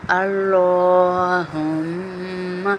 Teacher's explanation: یہ ہا جو ہے نا یہ سینے سے نکلتا ہے ، ہا ہائے بولتے ہیں نا ہم، ہائے وہ والا ہا · اللہ، لام کو پر پڑھیں گے، موٹا پڑھیں گے